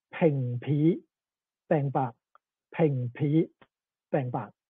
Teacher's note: in Cantonese, b usually becomes aspirated p in tones A and B, and unaspirated p in tones C and D. So, Nanning Cantonese, ping pi bang ba, ping pi bang ba.